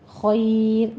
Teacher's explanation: بیدک الخیر، خیر 2 سے 3 حرکتوں درمیان یہاں پہ مد عارض لین ہم کریں گے، اور را باریک ہو جائے گی کیونکہ پیچھے یا ساکن ہو رہا ہے